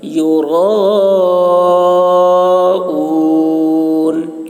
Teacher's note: یراؤون میں را کو موٹی آواز میں اور کھینچیں گے مد ہے